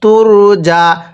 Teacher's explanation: এই যে র সাকিনের পূর্বে পেশ হলে র সাকিন মোটা করে পড়তে হয়।